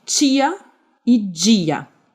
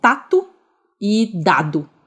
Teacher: Então, em algumas partes do Brasil, como no dialeto paulistano, né, por exemplo, a gente tem o T e o D sendo realizados como Ch e J, quando eles estão antes de um I. É o caso de tia e dia.